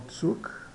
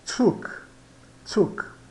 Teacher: de um modo geral o z é pronunciado como TS